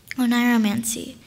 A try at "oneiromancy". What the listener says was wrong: Yes, now you are.